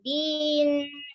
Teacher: Tawasud di akhir nun jangan terlalu lama. Din. Nanti jadi gunnah dia.